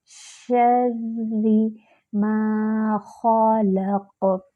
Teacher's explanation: الف خالی، اس سے پہلے فتحہ الف مد، اس کو 2 حرکات برابر لمبا کریں گے۔ خا جو ہے وہ موٹا حرف ہے، اور خا جو ہے وہ ادنیٰ الحلق سے ادا ہوتا ہے۔